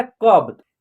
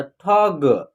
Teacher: वो छोटा शब्द हो या बड़ा शब्द हो, यानी लास्ट वाला अक्षर का उच्चारण आधा होगा उसका जो है ना, तो इसका यहाँ जो होगा बी हो जाएगा, कब, ब का बी, तो ये क्या हो गया कब। किसी भी शब्द को जब आप पढ़िएगा तो लास्ट वाला जो अक्षर है उसका उच्चारण आधा यानी कि कम होता है, उसका साउंड कम निकलता है, अ की साउंड उसमें नहीं निकलेगा